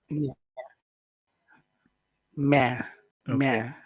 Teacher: One, it's down here in your throat. Two, it's not a mix of sounds. It's just one pure sound. It's just e. And three, it's very short in duration.